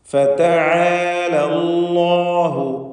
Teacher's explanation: അല്ലാഹു എന്ന ഇസ്മുൽ ജലാലയിൽ ലാമിനെ തടിപ്പിക്കണം. തഫ്ഖീം ചെയ്ത് സ്വരഭാരത്തോടെ ലാമിനെ ഉച്ചരിക്കണം.